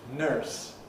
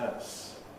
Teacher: historically of course it had an r element in it and americans mostly still have that r element